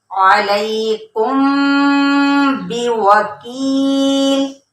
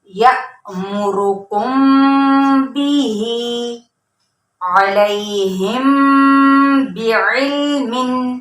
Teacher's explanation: सिर्फ एक अलिफ के बराबर हमने गुन्ना करना है और होंठों को सख्ती से भी जमा के फिर अदा करना है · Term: इख्फाए शफवी